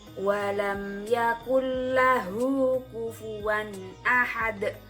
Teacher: lam Hai dan rok maka hukum bacaannya disebut idgham bilagunnah membaik untuk cara membacanya yaitu memasukkan dengan tidak mendengung